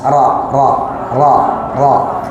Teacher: Sedikit punggung lidah yang menempel di gusi atas. Ro. Jadi ujung lidah ini sedikit ke belakang, bukan ujungnya yang nempel.